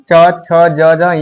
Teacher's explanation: च छ ज झ ञ ये सब तालु से बोला जाता है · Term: च वर्ग